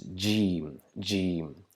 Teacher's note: produced by touching the middle part of our tongue to the upper palate and trying to produce a strong J sound, just like in English J, to produce the sound jug.